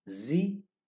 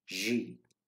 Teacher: the tip of the tongue stays a little behind upper front teeth unlike the z of english